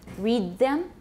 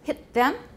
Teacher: alveolar consonant before an interdental sound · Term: dentalization